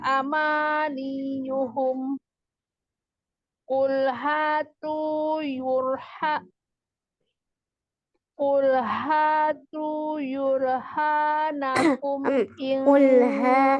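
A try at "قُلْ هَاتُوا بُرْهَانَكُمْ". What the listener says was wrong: Qul hatu burhanakum, bukan yu itu ba.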